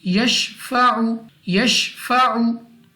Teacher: ayn we will read from the place of pronunciation, yashfa'u, don't read like alif, like yashfa'u, read from the place of pronunciation, yashfa'u, yashfa'u.